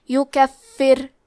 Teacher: را کا حکم ہے ترقیق، مطلب ہمیں حرف الرا کو پتلی آواز میں پڑھنا ہے